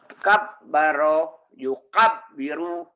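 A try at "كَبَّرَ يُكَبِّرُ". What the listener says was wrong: Kurang. Kabara, kabara. Tapi jangan kabara, jangan. Pendek ujungnya.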